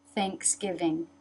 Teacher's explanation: of American the tongue comes up to make the N Thanksgiving tongue through the teeth for the th tongue up in the back to make the NG the teeth